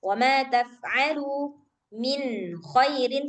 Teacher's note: suara nunnya harus jelas karena dia izhar